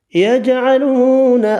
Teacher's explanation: فیہ ظلمات ورعد وبرق یجعلون اصابعهم فی آذانہم، یجعلون جیم ساکن پر قلقلہ کریں گے، واو مدہ 1 الف کی مقدار میں کھینچ کر پڑھنا ہے